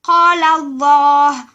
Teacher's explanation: La lettre Lam se lit toujours aminci, sans emphase, sauf dans le nom de Allah, Lafzul Jalala. En effet, il obéit à l'emphase quand le nom de Allah est précédé d'une lettre vocalisée en fatha